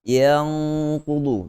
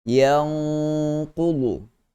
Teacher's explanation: dia punya gunnah itu mestilah kita tebal kerana kita telah masuk pada makhraj huruf qaf